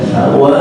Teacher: Karena mata kita melihat jelas adanya tanwin, tapi kuping kita tidak mendengar suara tanwin, tapi mendengar suara panjang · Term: mat iwan